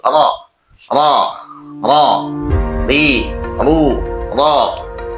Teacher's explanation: Sedangkan menurut istilah pengucapan huruf disertai dengan bergetarnya ujung lidah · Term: takrir, at-takrir